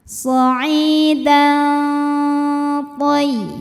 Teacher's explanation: Karena ada tanwin fathah menghadapi huruf tha. Maka tanwin dibunyikan samar-samar, siap-siap menuju makhraj huruf tha disertai dengung. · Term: ikhfa aqrab